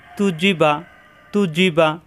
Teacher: তাপেশ তু, জিমজের জি, বাজাবর বা, দুই ঠোঁট থেকে তু জি বা, তু জি বা, তু জিহ্বার আগা উপরে দাঁতের গোড়ায়, জি জিহ্বার মাঝখানে উপরে চাপ, বা দুই ঠোঁট থেকে